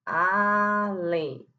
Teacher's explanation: Além é uma oxítona, é só fazer separação silábica. Além, o acento cai na última sílaba · o acento cai na última sílaba, então é uma oxítona acentuada